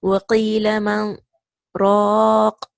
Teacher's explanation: So you will say وَقِيلَ مَنْ رَاقٍ. You will stop for a small time. In that same breath, you will say raq.